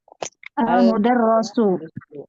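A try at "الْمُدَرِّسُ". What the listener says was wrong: Iya, tasydidnya kasrohnya di bawah tasydid ini lagi. Lagi-lagi kasrohnya di bawah tasydid ya. Biasanya kita terbiasa dengan kasrohnya di bawah huruf ro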